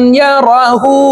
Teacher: এই হাকে ঠোঁট গোল করে একালিপ টেনে পড়ব